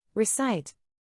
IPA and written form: rɪˈsaɪt (Recite)